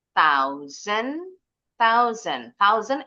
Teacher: ujung lidahnya harus keluar dulu karena kalau enggak keluar nanti bunyinya kayak kayak huruf T atau huruf D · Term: bunyi th